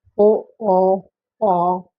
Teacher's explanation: जैसे उ ऊ देखो ये होठ गोल हो रहे हैं कि नहीं हो रहे? उ ऊ ओ औ औ यह गोलाकार हो रहे हैं होठ हमारे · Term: वृत्ताकार